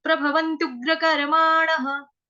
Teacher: विसर्ग का उच्चारण ह से